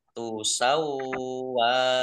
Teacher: Ar-rasula indumah wawu sukun mat tobi'i panjang 2 harokat. Lautu sawwa wawunya dibaca double ada tasdidnya